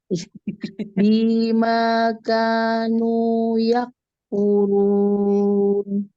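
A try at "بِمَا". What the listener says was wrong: Bimanya b-nya masih kepanjangan lagi diulang lagi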